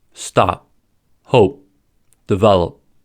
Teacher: whether we release the sound or not. To hold the sound, we start to say the sound by blocking off the air flow where the stop normally happens, but we don’t release the air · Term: unreleased